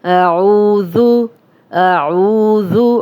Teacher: او واو مدہ، دو حرکات لمبا کریں گے، ذال کو نرم پڑھیں گے، اس کی پیش کو لمبا ہونے سے بچائیں گے